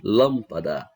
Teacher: A sílaba que é pronunciada com mais força é a antepenúltima. Então, essa palavra ela é proparoxítona.